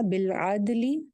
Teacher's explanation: دال کے اوپر کلکلا ہو جائے گا